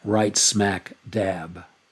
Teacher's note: now you have three accented syllables in a row